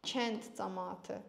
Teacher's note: Özündən sonra nə gəldi? Samit gəldi. Ona görə karlaşmalıdır.